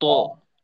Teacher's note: ঠোঁট একেবারে পূর্ণভাবে খোলা রেখে জোরালো মোটা ভাবে উচ্চারণটা।